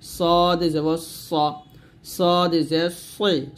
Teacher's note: সদ উচ্চারণ করতে হবে জিহ্বার আগা সামনে নিচের আগা থেকে শীর্ষ মোটা ভাবে আদায় করতে হবে সতর্ক মানে হচ্ছে সদ জবর সা বলা যাবে না সদ জবর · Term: মোটা হরফ